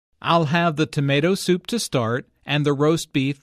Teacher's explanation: tomato soup roast beef and mashed potatoes are compound words the stress falls on the second word in each phrase